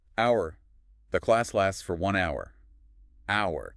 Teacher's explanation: But you completely ignore the H. It is entirely silent. Right. Which makes it an exact acoustic twin of the possessive word hour, spelled O-U-R.